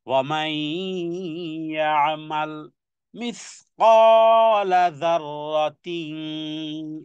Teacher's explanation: ওয়ামাই, নুন সাকিনের পরে ইয়া এসেছে, ইদগামে বা গুণনা।